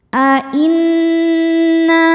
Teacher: Cara membacanya berdengung. tahan dengungannya kurang lebih dua harakat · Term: ghunah musyaddadah